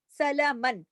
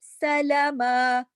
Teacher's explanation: جب ہم رکیں گے، وقف کریں گے، تو یہ 2 زبر کی تنوین ختم ہو جائے گی